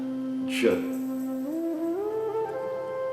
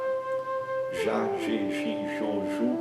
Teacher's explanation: É um som igual, por exemplo, do nome próprio, Djalma, que a gente utiliza aqui no Brasil, Djalma, né? Então é como se tivesse um D seguido pelo J, J. Então, aquilo que a gente translitera como JA não é jamais lido como já, mas sim J.